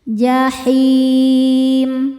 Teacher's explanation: Cara bacanya lam dibaca izhar atau jelas atau disebut dengan izhar qamari.